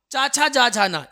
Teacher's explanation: तालब जो है तालू से बोलते हैं